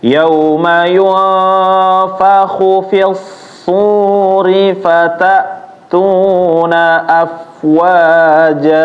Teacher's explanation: Khu-nya pendek ya Bapak, jangan dipanjangin. Kalau panjang dia ada wawunya.